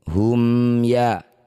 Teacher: Mim sukun bertemu bukan mim bukan juga ba, disebut bacaan namanya izhar syafawi. Baca jelas bunyi mim sukun, rapatkan bibir, tidak usah dengung.